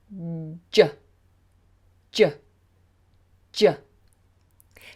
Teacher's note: you'll notice that my lips push forward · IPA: /ʤ/